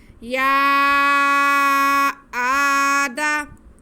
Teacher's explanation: ये ऊपर निशान बना हुआ है। हम या को 4 अलिफ के बराबर खींच कर पढ़ेंगे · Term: मद मुनफसिल